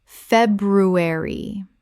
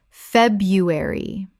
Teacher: The first R is silent in natural spoken English.